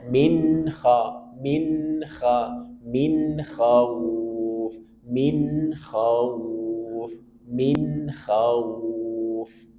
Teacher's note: Ada nun sukun bertemu dengan k. Hukumnya izhar. Jelaskan bunyi nunnya. Sedikit alirkan.